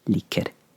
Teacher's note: Such a satisfying phrase to say because like an R sound in Norway, in Norwegian, it's not like a roll of the R's, but like there's a slight sort of roll to it